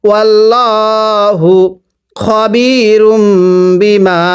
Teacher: আর এই মিমটি আমরা গুন্নাহ করব, কারণ মিম সাকিনের পরে বা থাকলে মিম সাকিন গুন্নাহ করে পড়তে হয়